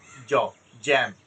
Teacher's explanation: এই সাউন্ডটা একদম জ সাউন্ড, হ্যাঁ, জিহ্বাটা উপরে তালুর সাথে লাগবে, জ, জ্যাম, হ্যাঁ, বোরকার জ যেভাবে উচ্চারণ হয়, এই সিম্বলটা যেখানে থাকবে সেই জায়গায় আমরা জ এর মধ্যে উচ্চারণ হবে, এই সিম্বলটা সাউন্ড কিন্তু জ, এটা মাথায় রাখবেন।